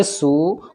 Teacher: واو ساکن سے پہلے سین کے اوپر پیش ہے تو واو مد ہوگا یعنی واو کھچے گا